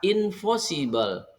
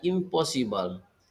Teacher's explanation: menjadi Impossible jadi rupanya bunyi P pada invosibel itu adalah mempengaruhi bunyi n yang dental nasal kemudian berubah menjadi Bunyi m yang sifatnya bilabial nasal jadi ciri-ciri bunyi p yang sifatnya bilabial itulah yang mempengaruhi bunyi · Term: asimilasi parsial